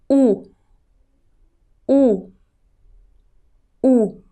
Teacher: pronounced like double O in the word boots, but you should put your lips as if you are going to kiss someone.